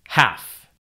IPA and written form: hæf (half)